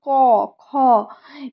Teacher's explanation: ক খ এই গুলো যখন উচ্চারণ করছি তখন গলায় একটা চাপ পড়ছে